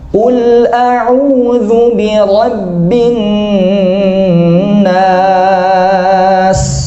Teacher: nunnya keluar dari hidung, tapi panjangnya matnya nggak boleh dari hidung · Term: gunnah